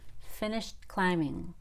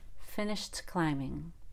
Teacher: I do a held tee there but I could just as easily see someone doing a clear tee